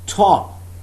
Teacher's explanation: For example, the aspirated t of top, t sound, when used in the word top, can you feel there is some sort of aspiration, puff of air? Top. The unaspirated t of stop, there is no aspiration when I use this phoneme in the word stop.